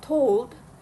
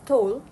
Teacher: Instead of saying told, the speaker pronounce it as told, leaving out the d sound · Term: elision